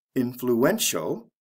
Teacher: influential the stress comes right before the ending